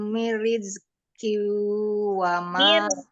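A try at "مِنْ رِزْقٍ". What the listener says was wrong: Mirizqiu, tasdid ra mirizqiu.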